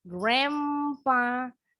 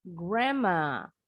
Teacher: huruf D-nya silent. Kemudian huruf N-nya berubah bunyi jadi M.